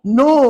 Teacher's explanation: Waw ni adalah huruf mat pada dia. Dan oleh kerana dekat nun tu ada tanda pemanjang, maka nilainya 6 harakat. Dan tidak ada dengung.